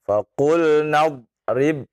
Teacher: Na memang dia panjang, tapi bertemu dengan ya sukun ya, maka tidak dipanjangkan.